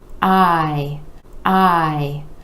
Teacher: we have the I vowel sound where that jaw is dropping down and coming back up